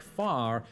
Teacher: most Americans today sound out the r in words like far whereas most English people don't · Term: rotic